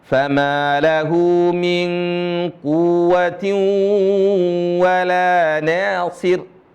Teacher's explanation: Wawu bertasydid tidak ada khayshum, tidak ada gunnah